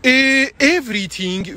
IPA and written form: ˈevriθɪŋ (everything)